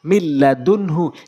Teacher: এখানে নুন সাকিনের পর লাম এসেছে, এটি ঈদগামে বেলা গুন্নার নিয়ম, গুন্না ছাড়া পড়তে হবে